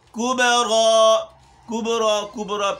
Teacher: پیش کی طرف قلقلہ مائل نہ ہو اور نہ زبر کی طرف